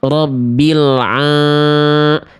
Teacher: suara masuk ke dalam rongga hidung sehingga sengau. Itu salah.